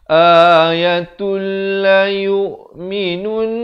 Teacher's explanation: Idgham bila gunnah di sini. Asalnya ayatun. Tapi bila datang lam. Masuk tanpa dengung.